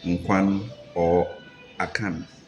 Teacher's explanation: In a few instances where we have words that end in consonants, like Nkwan or Akan, we nasalize it, we speak them through our nostrils, and in a way convert them from their consonant forms into a form of vowel.